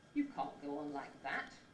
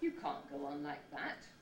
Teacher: it's got to be really low it's got to be right down at the bottom of your pitch range · the second head that's uh of relevance is the low head the pitch stays very low and level throughout the head